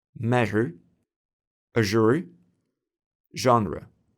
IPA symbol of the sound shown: ʒ